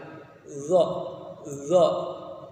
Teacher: Dha, nafasnya ditahan. Dha, dan suaranya tidak tertahan, nafasnya saja yang tertahan. Pangkal lidah naik ke atas langit-langit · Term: huruf dha